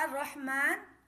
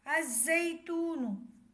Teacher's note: یہاں را کا الرحمن یعنی الرحمن، یہاں بھی لام ہے، لام پڑھا نہیں جائے گا، لام خاموش رہے گا، الف کو را سے ملائیں گے۔ اس کی ہجے حمزہ را زبر ار، را ہا زبر را، الراہ، میم کھڑا زبر ما، الرحمہ، نون پیش نو، الرحمن۔